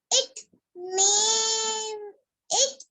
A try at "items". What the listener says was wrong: items. ना it items नहीं, common breakfast items.